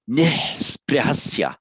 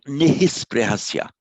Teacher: However, when it's part of the same word or another, here part of a word with another consonant immediately following, you just pronounce the H on its own without the shadow vowel after it